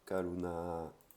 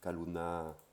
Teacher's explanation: Pareil, le kokai, c'est pas un que, c'est pas un je, un ge, c'est pas un ge, c'est pas un que, c'est entre les deux. Karuna. Voilà, petit exemple.